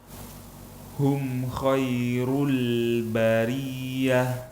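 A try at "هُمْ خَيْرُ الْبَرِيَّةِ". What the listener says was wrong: Sudah sempurna tapi lamnya kita tipiskan.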